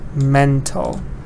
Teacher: stress is on the first part and it's an adjective